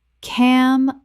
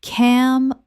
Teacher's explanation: Word 206 camouflage common mispronunciation cam-o-flage correct pronunciation cam-a-flage Three syllables with the final g e making a z h sound.